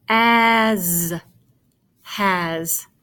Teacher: the S sounds like a Z